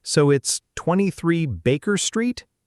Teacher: your voice rises on street, showing that you're checking, not just repeating.